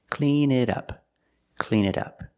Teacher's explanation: the T in it sounds like a fast D